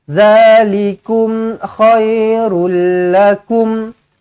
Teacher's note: Kum mim mati. Izharu syafawi. Matikan dengan jelas dan terang.